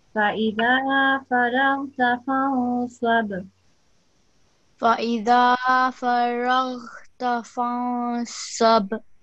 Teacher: There's the calcula letter, ba with the sukoon. So make a bit of a jump in that sound.